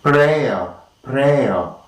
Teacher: we have three tongue positions, that is a diphthong followed by a vowel sound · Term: triphthong